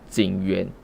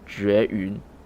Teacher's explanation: Notice that the difference between J and JU is similar to the difference between Z and ZH. J is pronounced like a buzzing Z sound, and JU is pronounced with a lower ZH sound.